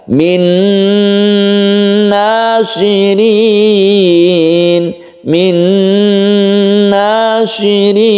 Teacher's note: huruf nun ditasydidkan karena masuk ke huruf nun, dan biguna didengungkan. Min nasirin, min nasirin. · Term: idgham biguna